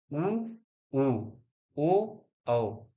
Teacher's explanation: वृत्त मुखी और आवृत्त मुखी यानी वृत्ताकार जिनको बोलते समय उच्चारण करते समय ओठ की जो आकृति है वो वृत्ताकार हो जाए